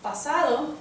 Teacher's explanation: we can tell that there's very little to no aspiration that comes out there